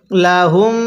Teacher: আগে আমরা মিমকে মিমের সাথে লাগিয়ে গুনাহ করে নেব এরপরে আমরা মিমের মধ্যে এক আলিফ টান দিব